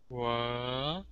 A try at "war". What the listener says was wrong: You are thinking A-R. You can't do that. You have to think of this sound. Or? Or? War? War? War. So we don't say war. No, war. War. Or. Let me show you my mouth. Don't move your tongue. If I move my tongue, my sound goes crazy. So you have to hold your tongue still. Or. Or.